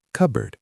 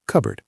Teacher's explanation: We say cupboard. The P is silent or changes to a soft B sound.